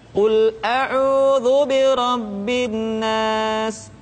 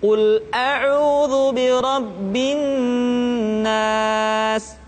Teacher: ditahan suaranya ketika mengucapkan Nun tasydid